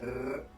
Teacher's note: a trilled R, which is where you roll your R